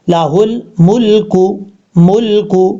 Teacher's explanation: ہا کو جب لام سے ملائیں گے تو بیچ میں الف کو چھوڑ دیں گے